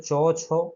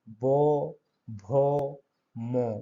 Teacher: যেগুলো উচ্চারণের সময় স্বরতন্ত্রী অনুসরিত হয় বা কাঁপে, উচ্চারণ করার সময় দেখবে গলাটা কাঁপবে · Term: ঘোষ ধ্বনি